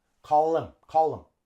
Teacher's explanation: We link call and him also. But we drop the H. The H does not link well.